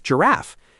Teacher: In some dialects, the scratchy sound drifted forward in the mouth and became the f sound, which is why laugh rhymes with giraffe.